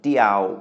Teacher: Mid-tone for a mid-class consonant, Diao, which means alone